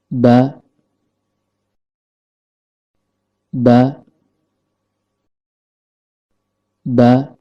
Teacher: Huruf ba keluar dari tempat pertemuan antara bibir bawah dengan bibir atas dan kondisi lidah dalam keadaan normal.